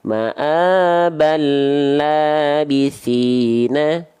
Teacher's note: Kalau kita sambung antara ma'aban dengan labithina, baru muncul tanda tasydid sebagai tanda ini adalah idgham bila gunnah, dileburkan dari ban ke la.